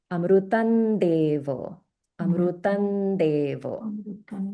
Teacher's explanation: So because the anus is followed by the which is a dental sound this anusara we can pronounce as a n sound a dental n